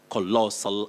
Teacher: colossal you have the stress on the second syllable you say core then lossl colossal amount of money and the